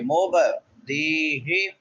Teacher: مبدیہ دال کے بعد یا مدہ ہے، یا ساکن ما قبل کسرہ ہے، ایک الف کے برابر لمبا کریں گے